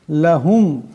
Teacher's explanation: পড়তে হবে হা এখানে বড় আছে গলা থেকে আনতে হবে লাহুম এখানে মিম সাকিন আছে কিন্তু এই মিম সাকিন কে গুন্না করা যাবে না